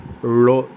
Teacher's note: நாக்கை சுழற்றி உள்பக்கமாக உள்நாக்கின் பக்கம் கொண்டு சென்று லோ என்று கூற வேண்டும்